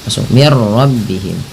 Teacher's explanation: Nah, karena di sini nun mati bertemu ra, langsung saja diidghamkan. Idgham itu memasukkan bunyi nun ke ra sehingga bunyi nunnya tidak terdengar lagi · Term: idgham bila gunnah